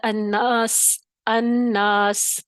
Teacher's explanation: تو سین کی سیٹی زیادہ واضح ہو گئی، نمایاں ہو گئی۔ تو یہ جو ہیں سیٹی والے حروف ہیں اور ان کو کہتے ہیں حروف صفیریہ، اور یہ صفت ہے صفات لازمہ غیر متضادہ۔ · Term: صفت صفیر